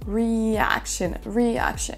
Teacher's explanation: le mot reaction qui devrait s'accentuer sur la deuxième syllabe